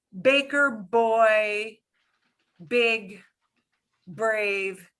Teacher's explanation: If you say baker, boy, big, brave, and you put your hand in front of your mouth, you can feel air. And that means that it's an explosive B in English.